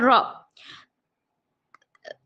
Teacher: سا، سا زبان کی نوک کو سامنے کے 2 دانتوں کے حصے کو، سامنے کے 2 دانتوں کے کنارے کو لگانے سے سا ادا ہوتا ہے، سا پر زبر ہے نہیں کھینچیں گے، سا کو ہلکا پڑھیں گے، سا زبر سا۔ را، را زبان کے سائڈ کے حصے کو لیفٹ اور رائٹ سائڈ کے داڑوں کو لگانے سے را ادا ہوتا ہے، را پر زبر ہے نہیں کھینچیں گے، را زبر را۔